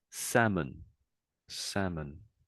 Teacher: the L is silent for I'd say for a 90% of people